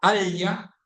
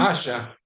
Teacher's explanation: the existence of a lateral palatal sound L, which is used written with double L.